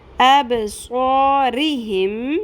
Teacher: را کے نیچے زیر ہے، را کو باریک پڑھنا ہے